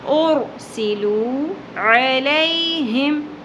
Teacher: عین وسط حلق سے،